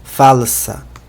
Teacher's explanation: A escrita praticamente a mesma que em português, só a pronúncia que é diferente porque o L não é pronunciado como U, né? No português a gente faz isso.